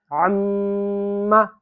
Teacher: یہاں غنہ کر دیا میں نے کیونکہ میم پر تشدید ہے